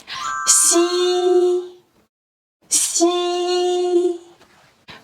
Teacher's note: The front part of the tongue is raised toward hard palate, creating a narrow slit. The airflow then brushes through this slit. The vocal cords vibrate during this process.